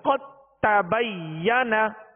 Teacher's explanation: اب دال کو تا میں مکمل داخل کر دیا تو یہ مکمل ادغام ہے. · اب اس کو قد تبینہ نہیں پڑھیں گے، اس کو قد تبینہ یعنی تا پڑھیں گے، دال کو تا میں داخل کر دیا، دال کو تا میں داخل کر دیا، اب دال کی کوئی صفت باقی نہیں رہے گی، دال نہیں پڑھیں گے بلکہ تا ہی پڑھیں گے۔ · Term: ادغام تام